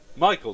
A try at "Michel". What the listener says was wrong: Yeah, you did say Michael. It's Michel.